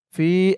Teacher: ফা ইয়াজের ফি, ফি এক আলিফ টান, জেরের পরে ইয়া সাকিন।